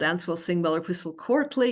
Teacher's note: the stress on all of those is a weak final syllable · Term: feminine endings